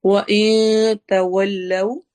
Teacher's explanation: وَإِن تَوَلَّوْا، وا میں ہونٹ گول ہوں گے، میں اخفا کی آواز ہوگی، یعنی نون کی آواز کو ہم نے چھپا کے پڑھنا ہے۔ تَوَلَّوْا، واؤ میں اگین ہونٹ گول کریں گے۔